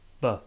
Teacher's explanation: The only difference is that one is voiced. So B is voiced. I use my vocal cords